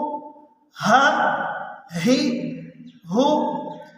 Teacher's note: یہ دونوں حرف حلق کے اس آخری لاسٹ حصے سے نکلتے ہیں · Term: حروف حلقی